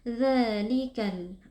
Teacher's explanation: Mad thi'i ditandai dengan Alif kecil yang sebelumnya berharakat Fathah di baca panjang dua harakat dzalikal di sini ada alif lam alqamariyah karena ada alif lam